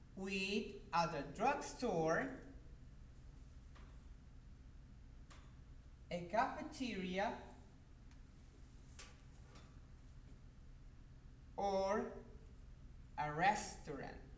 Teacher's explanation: in the last alternative, it starts from tone number 2, it rises to tone number 3, and it falls in tone number 1 · the rising intonation is given to the first and the second alternative, but in the third alternative, or in the last one, is given the rising-falling pattern. So here we have a tone number 2, it rises to tone number 3, and it ends there.